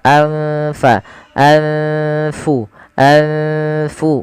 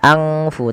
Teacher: Cara membacanya adalah nunnya disamarkan kepada fa. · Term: bacaan ikhfa